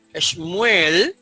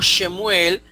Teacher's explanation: a veces no se acostumbra a pronunciar el sheva vocal en palabras